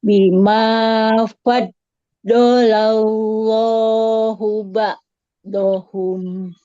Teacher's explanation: Lam di lafaz Allahnya karena didahului fathah dia tebal.